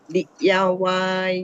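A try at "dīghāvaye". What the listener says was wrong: Not dig. Remember, I say DI one syllable, GHA is ga. Diga. Not dig. Digava. Not dig. The third line, just now, the I is long. Diga.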